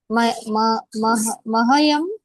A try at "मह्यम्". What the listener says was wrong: Not ma, not ha. It's h. Mahyam. Ha. Ha. Mah. You say mah. Mah. Mahyam. M-A-H-Y-A-M. Mahyam.